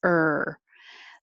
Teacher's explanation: you put your tongue curled back near the front but curled back and you just make noise